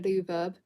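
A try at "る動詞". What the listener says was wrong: See, the thing is, you're saying ru verb and u so fast. It's exactly the same. Because you're obviously jumping over the R.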